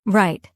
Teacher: In many languages, R is rolled or very strong. In English, it's softer, and the tongue pulls slightly back. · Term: English R